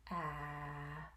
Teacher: a makes the ah sound so i'm going to demonstrate here holding just lightly onto my throat i can hear that vibration and ah and i can hold that sound too continuous so